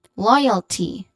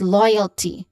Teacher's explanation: Oi is the diphthong, and it is part of the first syllable, loyalty.